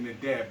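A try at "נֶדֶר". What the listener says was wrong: Well, you gotta roll them a little bit so I can understand.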